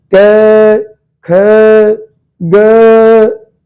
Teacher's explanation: इसका उच्चारण स्थान है कंठ। हमारे गले से आवाज आ रही है